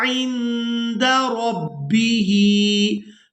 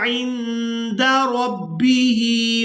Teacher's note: नून साकिन पर इख्फा करेंगे, यानी नून की आवाज़ को नाक में छुपा कर अदा करेंगे। इसके बाद रा को पूरा अदा करेंगे।